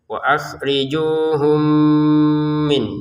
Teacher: mim yang pertama dimasukkan kepada min yang kedua dengan dengungan